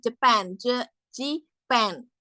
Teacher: The primary stress is the last syllable